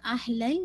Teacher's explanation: अहलल लाम को मखरज पे पूरा टिकाइएगा